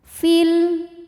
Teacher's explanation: Tapi panjangnya hanya saat berhenti saja. Kalau wasal madnya gugur, fi-nya pendek. Fil namanya takhallus bil hadfi.